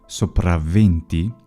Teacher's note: the initial consonant is geminated